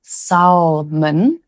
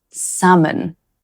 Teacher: The L is silent in this one, so it's not pronounced salmon, it's pronounced salmon.